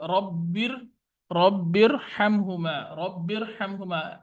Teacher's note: जहां पर रा साकिन हो और उससे पहले जेर हो वहां पर रा पुर पड़ी जा रही